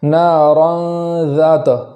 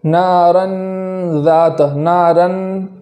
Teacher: اخفا کو اس طریقے سے نہیں پڑھیں گے کہ نون کے مخرج میں زبان لگ جائے، جیسے نارن ذات، نارن زبان کو مخرج میں لگا نہیں دیں گے بلکہ دور رکھیں گے اور اسی کے ساتھ گنہ بھی ادا کریں گے